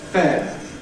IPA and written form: feː (fair)